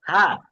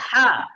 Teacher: প্রথমটা হা গলার শুরু থেকে হা সাধারণভাবে পরেরটা হচ্ছে গলার মাঝখান থেকে বলতে হবে